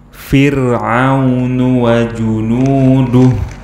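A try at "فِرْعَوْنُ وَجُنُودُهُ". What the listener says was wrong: Du itu bukan dal Indonesia. Du itu bukan dal Arab ya. Du itu bukan dal Arab ya. Du itu dal Indonesia. Pakai dal Arab.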